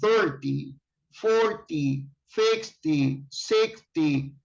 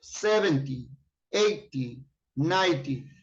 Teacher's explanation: the stress syllable is at the beginning